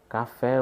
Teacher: qual a sílaba tônica da palavra café é a última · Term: oxítona